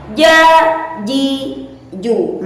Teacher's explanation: Jim didapatkan secara tipis-tipis tanpa harus menaikkan atau tanpa harus menempelkan pangkal lidah ke atas langit-langit dan tanpa mengecilkan atau menghimpit kita suara manakah kita suara sehingga